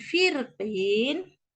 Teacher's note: maka huruf ro itu ditebalkan karena tidak ada lagi keadaan yang boleh menipiskan huruf tersebut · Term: tafkhim